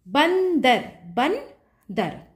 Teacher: ब के बाद आपको न की ध्वनि आ रही है तो अनुस्वार आपका ब के ऊपर लगेगा जयंती जयंती तो य